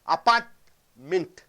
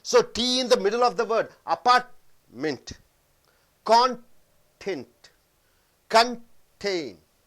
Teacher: T as a glottal stop in the middle of a word as a syllable